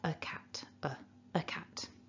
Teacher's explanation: the weak form of a is just uh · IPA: /ə/